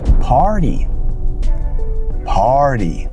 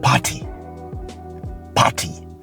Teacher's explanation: hear the r in between the word it's not poty poty when you say poty you don't hear the r in the word but when it comes to the American accent the r is heavily stressed · so you notice you can hear the r in between the word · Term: medial R